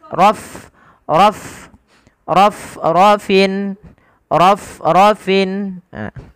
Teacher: buumi dibunyikan yaitu sifat hamnya HAM itu apa hamal mengalirnya nafas nafas mengalir ya ketika melafalkan Fa harus alir